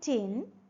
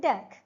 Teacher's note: During the production of T and D, the tip or blade of the tongue touches or comes closer to the alveolar ridge. Okay, alveolar ridge means the bony ridge behind the upper front teeth. · the vocal cords do not vibrate during the production of T, but they do or they vibrate during the production of D to make voice. And we know that the soft palate is raised to shut the nasal passage.